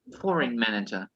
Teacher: The stress is in the first syllable.